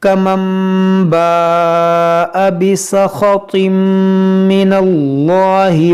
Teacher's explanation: یہاں پر دیکھیں نون ساکن کے بعد با ہے تو یہاں پر اقلاب کریں گے، اس نون ساکن کو میم سے بدل کر پڑھیں گے، اور یہاں پر مد متصل ہے، ہر الف مدہ کے بعد حمزہ اسی کلمے میں ہے.